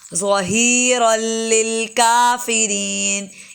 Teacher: را موٹا ہے، اس کے بعد لام کو باریک اور کاف بھی باریک، ظہیرا للکافرین۔ اس کو ہم اگر پڑھ جائیں نا قافرین تو یہ غلط ہو جائے گا، کافرین۔